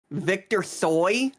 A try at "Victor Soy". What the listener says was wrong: You don't pronounce the T.